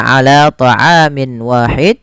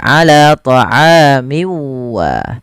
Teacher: berharakat tanwin pada Min bertemu dengan wau maka cara membacanya yaitu masukkan tanwinnya ke huruf wau kemudian dirubah suaranya menjadi huruf wau awalnya ala thamin Wahid menjadi ala thamiwa kemudian disertai dengan gunah